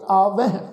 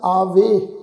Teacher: ਹਾਹੇ ਅੱਖਰ ਦੀ ਜਿਹੜੀ ਸਾਊਂਡ ਆ ਉਹ ਬਹੁਤ ਧੀਮੀ ਜੀ ਆਵਾਜ਼ ਵਿੱਚ ਹਲਕੀ ਜੀ ਆਵਾਜ਼ ਉਚਾਰਨ ਕਰਾਂਗੇ। ਆਵਹਿ, ਇਹਨੂੰ ਸਾਧ ਸੰਗ ਆਵੇ ਇਸ ਢੰਗ ਨਾਲ ਉਚਾਰਨ ਨਹੀਂ ਕਰਨਾ।